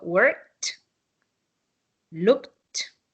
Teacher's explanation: when it ends in K, you have to pronounce it like T